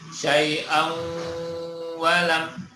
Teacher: Ya, ini disebut idgham bi gunnah, masuk dengung. Idgham itu masuk, gunnah dengung. Bunyinya kelihatan sekali masuknya. Syai'an, tanwinnya masuk ke huruf wawu.